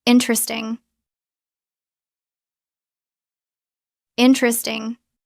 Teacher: Drop the first e. Interesting. Three syllables. Let's practice interesting because it's very common.